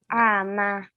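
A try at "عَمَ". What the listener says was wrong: Do not stretch the ain. Ama.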